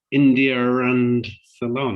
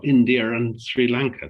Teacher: if the next word begins with a vowel they will put a r in there even if there isn't one